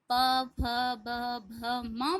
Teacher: आप जब प फ ब भ म बोल रहे हैं तो आप अपने आप देखेंगे कि आपके दोनों लिप्स एक दूसरे से चिपक रहे हैं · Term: ओष्ठ